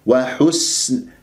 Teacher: والسين ساكنة صفير يجري فيها الهواء يعني مهموس ويجري فيها الصوت رخاوة